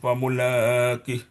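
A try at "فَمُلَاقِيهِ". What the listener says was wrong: Famulaqih. Dikit dong, sedikit kurang. Ki-nya panjang.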